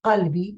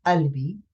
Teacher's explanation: So in fact, the qaf will be not pronounced.